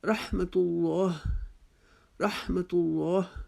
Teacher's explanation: رحمت اللہ میں اللہ کے لام سے پہلے پیش آ گئی تو ہم نے اس کو بھی موٹا پڑھا